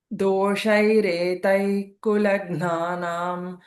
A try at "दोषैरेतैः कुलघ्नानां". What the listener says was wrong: Retaih. Ich sound should come there. Visarga, for visarga.